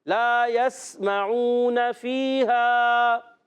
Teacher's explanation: سین سیٹی والے حروف میں سے سیٹی سے ادا ہوگا، سین کو ہلانا نہیں. کوئی بھی ساکن حرف آ جائے جب تک حرف قلقلہ کا نہ ہو، ساکن حرف قلقلہ والا ہو تو ہلے گا، آواز لوٹے گی، مگر غیر قلقلہ والے حروف ہوں گے تو ان میں قلقلہ نہیں کرنا.